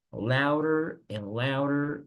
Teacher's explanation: La D que está en louder, tampoco leo la D de esa forma, sino la D se convierte en una R. So you say louder, no louder.